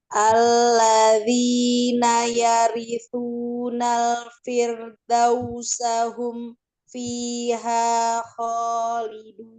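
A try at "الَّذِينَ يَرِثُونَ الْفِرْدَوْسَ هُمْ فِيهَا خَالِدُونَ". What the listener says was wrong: Masih kejeda itu. Kalau nggak kuat di satu ini aja. Nah, boleh berhenti di Firdaus itu.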